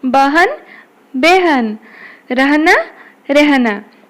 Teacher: ह के पहले आने वाले अ का ए जैसा उच्चारण होता है